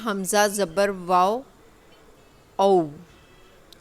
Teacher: जब वाव साकिन से पहले ज़बर आ जाए तो वो वाव लीन हो जाता है, यानी कि हमने उसको बड़ी सॉफ्टली, बड़ी नरमी से प्रोनाउंस करना होता है